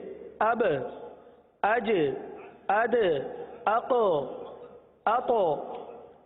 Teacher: ये आवाज का जुम्बिश होकर पलटना, जुम्बिश और हरकत, ये कलकला के खास बाने हैं, सही ना। जब इसकी अदायगी होती है तो मखरज में जुम्बिश ही होती है, जुम्बिश ही होती है, हरकत सी होती है, जिसकी वजह से आवाज लौटती भी आती है।